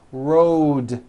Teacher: road also has a voiced d ending road it's not wrote on voiced its Road the whole word